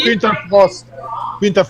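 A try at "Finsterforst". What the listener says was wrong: Frost. Not Frost, Forst. Forst. Forest. I mean, if that means forest in German, and Frost is like freezing.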